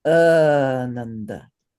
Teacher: it's just as important to shorten the second and third syllables as it is to extend the first syllable